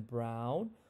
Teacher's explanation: it goes from the bottom middle to the top back